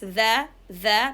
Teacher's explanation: dhal is produced or articulated from the tip of the tongue between upper and lower teeth. And this dhal is having lots of characteristics like openness.